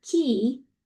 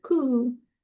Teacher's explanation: you could feel your tongue is in a very different place because you're accommodating uh that front vowel in key and you know the back